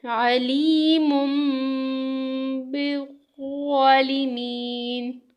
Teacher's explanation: اب تنوین کے بعد با آ رہی ہے، علیم بالظالمین. اب تنوین کے بعد ہمارے پاس با آ رہی ہے اور یہ میم میں بدل رہی ہے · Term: اقلاب